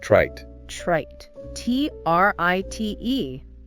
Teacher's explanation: The vowel sound in trite is shorter than in tried. Because T is voiceless, no vocal cord vibration, and D is voiced vibration. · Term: shorter vowel